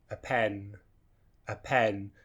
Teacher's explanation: But notice shouldn't really have any separation between the two. So we go through the unstressed word quite quickly to get to that stressed word, pen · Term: weak form